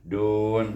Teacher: Daripada baris depan dal, makhraj dal pergi kepada makhraj bunyinya nun. Dun, dan dal dengan nun dan makhraj sana dekat-dekat. Nun belah atas sikit, dal belah bawah.